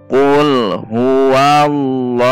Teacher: lafaz jalalah didahului harokat fathah berarti dibaca tebal atau tafhim